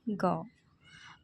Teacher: ग का उच्चारण करने पर हम कंठ का उपयोग करते हैं। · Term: कंठय